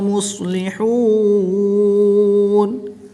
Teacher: واو ساکن سے پہلے ہا پر پیش ہے تو واو مدہ کے بعد نون کی زبر کو وقف کی حالت میں ساکن کریں گے، تو یہاں پر وقف کی حالت میں مد عارض ہوگی، 2 سے 3 الف تک کھینچ کر پڑھیں گے۔